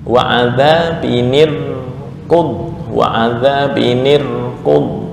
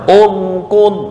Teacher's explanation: Wasal tarkik, ntar ketika ibtida menjadi tafkhim.